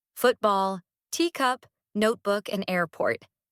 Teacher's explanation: in words like football, teacup, notebook, and airport, the emphasis falls on the first syllable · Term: compound nouns